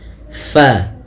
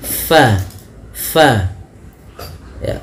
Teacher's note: huruf fa salah satu sifatnya yaitu dia hams mengalirnya nafas fa hati-hati di dalam melafalkannya jangan sampai dia terbaca dengan pabad bibir kita rapat.